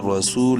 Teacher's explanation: کے پڑھیں گے زبر کی وجہ سے، سین واو پیش سو، واو مدہ ہے، سین کو ایک الف کے برابر لمبا کریں گے